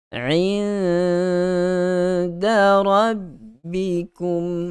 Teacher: Nun mati bertemu dengan dal, hukum dia ikhfa juga. Tapi disebabkan hukum yang terjadi daripada huruf nun yang mati, so kita sebut sebagai ikhfa hakiki.